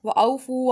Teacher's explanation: واؤ ساکن سے پہلے زبر، واؤ لین ہوگا